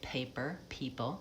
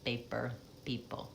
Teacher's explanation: So we, in American English and British English, say paper, people, and Arabic speakers will say more of an unaspirated P. It sounds like a B to us